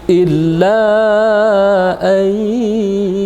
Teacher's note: Jadi ayyu kita tahan selama 2 harakat. Karena dia idgham bi gunnah.